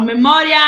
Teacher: Quando eu falo memória, ele tem um som mais forte do que o I. Então, o A, ele é uma vogal. E o I, ele é uma semivogal, porque o som dele é mais fraquinho · o I, ele é uma semivogal, porque o som dele é mais fraquinho, tá bom? Agora, a mesma coisa acontece com história, tá? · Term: ditongo